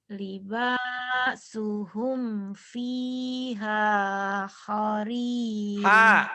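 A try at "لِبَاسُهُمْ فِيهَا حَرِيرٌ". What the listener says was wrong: Harirun bukan horirun. Ayo.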